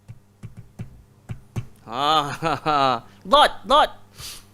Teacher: Dod, cara sebut dia seluruh lidah. Sebab tu sifat dia istitalah, memanjang. Langgar semua gigi ke atas.